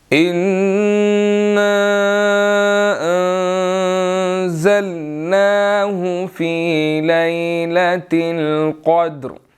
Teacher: انا کے اوپر جو ہے وہ چھوٹی مد ہے جس کو ہم نے 2 to 3 سیکنڈز جو ہے وہ لمبا کرنا ہے، اور ان نون مشدد ہے، یہاں پر ہم نے غنہ کرنا ہے۔